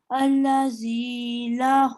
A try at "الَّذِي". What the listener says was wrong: الذي نہیں الذي تشدید نا تھوڑی دیر ٹائم لیتی ہے. الذي